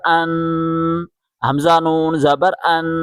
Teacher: حمزہ کو نون کے ساتھ ملائیں اور یہاں غنہ کریں